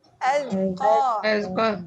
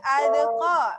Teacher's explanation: highlight kepada zal. Zal jangan dilantunkan. Azqa. Dilantunkan jangan adqa.